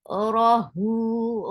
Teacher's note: Ra is short, but the sound is heavy.